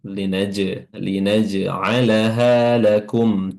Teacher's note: Di sini ada huruf jim yang sukun. di mana huruf jim ketika sukun dia juga memiliki qalqalah pantulan